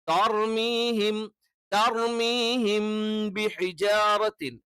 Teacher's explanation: തർമീഹിം ത എന്ന് തന്നെ വേണം, തേ ആയി പോകരുത്